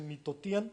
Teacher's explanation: Ciertos hablantes están dejando la glotal de lado y están favoreciendo, digamos, a la nasal final.